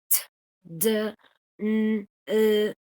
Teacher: those sounds which are made with the tip of the tongue making contact with the alveolar ridge. The alveolar ridge, remember, is that part of the palate that is hard and right behind your upper teeth. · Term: alveolar sounds